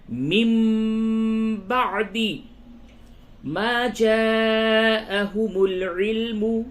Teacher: نون ساکن کے بعد با آیا، اس جگہ پہ قلب ہوگا، یا نون کی آواز کو میم سے بدل کر کے پڑھیں گے